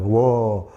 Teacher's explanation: 우어가 되니까 우 소리가 살짝 나잖아. 반모음 우 플러스 어.